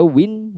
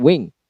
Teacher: Untuk win yaitu N dan untuk wing yaitu eng pada posisi yang sama. Jadi antara N dengan eng posisinya sama. · Jadi antara N dengan eng posisinya sama. Jadi kata win dan juga wing dibedakan oleh 1 segmen yaitu N untuk win dan kemudian eng untuk wing pada posisi yang sama. Sama-sama di akhir. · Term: minimal pairs